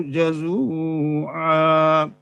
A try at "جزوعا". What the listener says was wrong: زا کو سخت کریں، زال نرم ہے، زا سخت ہے. اذا مسه الشر جزوعا.